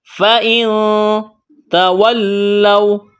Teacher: فَإِن تَوَلَّوْا، فَإِن، نون ساکن کے بعد تا ہے، حروف اخفا ہے، تو یہاں پر اخفا کریں گے، آواز ناک میں چھپائیں گے۔